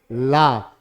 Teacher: ला मैंने बोला तो मेरी जी्हा जो है तालू से टकराई और पार्श्व भाग से तालू के पार्श पार्श मतलब साइड भाग से वायु का निष्काशन हुआ। · यानी पार्श्व भाग क्या होता है, जब जीभा जीभा तालू से टकराई और दोनों पार्श्व भाग से वायु निष्कासित हुई, तब ला का उच्चारण हुआ। वायु चूंकि पार्श्व भाग से निष्कासित हो रही है, इसलिए ला को क्या बोला गया, पार्श्विक व्यंजन बोला गया